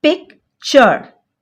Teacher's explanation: It's a bit tricky one because tu here sounds like ch